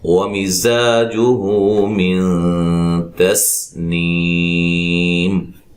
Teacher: زا کو سیٹی سے ادا کریں گے، اس کے مخرج سے نکالیں گے، ٹھیک ہے۔ زا، اور یہ الف مدہ ہے، جو ہو مد اصلی ہے، من نون ساکن کا اخفا ہے، باریک غنہ کریں گے، اخفا مع الغنہ۔